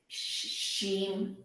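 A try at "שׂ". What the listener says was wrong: Dots on the other side, so it's a sin. Sim.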